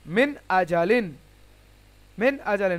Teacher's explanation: নুন সাকিনের পরে হামজা, ইজহার হবে, মানে বিনা গুন্নায় তাড়াতাড়ি পড়তে হবে।